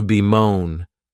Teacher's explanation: this verb has two syllables and the stress is on that second syllable